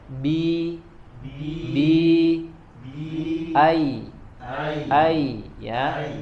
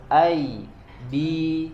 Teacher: Pasti bagian tengah lidah kita naik ke atas ketika mengucapkan kasroh ataupun mengucapkan huruf ya.